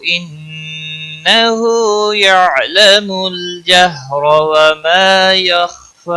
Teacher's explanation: انہ یعلم الجہر وما یخفی، انہ نون مشدد پر غنہ ہوگا، ہا کے اوپر الٹا پیش ہے، ایک الف کے برابر کھینچ کر پڑھیں گے